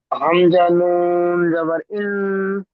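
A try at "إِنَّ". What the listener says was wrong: নুন জাবার নই, জের আছে। না, বা জাবার রব, হা, মিম পেশ হুম,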